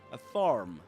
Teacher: In British English, in standard British English, you will usually say in standard southern British English, a farm without pronouncing the letter R